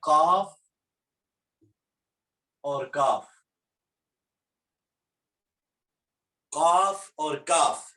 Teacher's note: زبان کی جڑ سے جو 2 حروف ادا ہوتے ہیں وہ ہیں قاف اور کاف